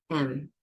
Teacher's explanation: M, the lips close. When my lips are closed, that's an M.